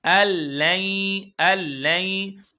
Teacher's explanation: اب یہاں پر ہم ادغام کریں گے، بغیر غنہ کے ادغام کریں گے۔ اللین، لام پر بھی ادغام ہے، یا پر بھی ادغام ہے، دونوں جگہ پر ادغام ہے۔